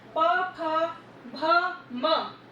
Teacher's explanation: अब होठों में कैसे ऊ, आपका जो ऊ बोलते हैं तो दोनों होठ आपके राउंड हो जाते हैं। ऊ ऊ प, प में दोनों होठ आपस से टकराते हैं और वापस से खुलते हैं। प, फ, भ, म, इस तरह से आवाज आती है। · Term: ओष्ठ